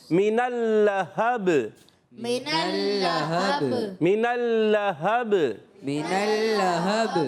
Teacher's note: اور با میں آخر میں قلقلہ ہو جائے گا